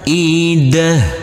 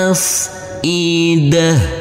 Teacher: untuk huruf tak marbutah ini karena kita wakafkan maka berubah menjadi huruf ha